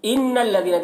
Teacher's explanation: دیکھیں نون مشدد ہے، نون میں غنہ کریں گے